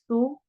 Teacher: سین میں سیٹی والی آواز ہے